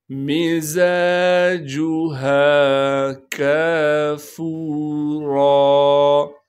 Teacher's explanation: را پر جب وقف کریں گے پھر را کو ایک الف کے مقدار کھینچنا ہے اور را پر زبر ہونے کی وجہ سے را کو موٹا کر کے بھی پڑھیں گے · زا کے بعد الف مدہ ہے لہٰذا زا کو ایک الف کے مقدار کھینچیں گے